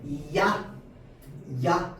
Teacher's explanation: 때만 야 소리 나고요 뒤에는 계속 아 소리만납니다 야 소리를 되면은 처음에 짧게만 야 소리가 나고 뒤에는 계속 아 소리가 따라옵니다